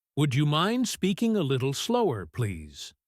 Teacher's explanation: Listen to the intonation. It goes up at the end to be polite.